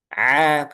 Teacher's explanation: A enggak boleh masuk hidung karena ini makhrajnya ditenggorokan.